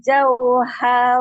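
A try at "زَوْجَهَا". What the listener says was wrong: Terbacanya zauha. Salah. Zaujaha.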